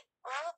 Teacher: او بولتے وقت منہ کی کیفیت اوپر نیچے نہیں ہوتی، صرف ہونٹ گول ہوتے ہیں۔ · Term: واو مدیہ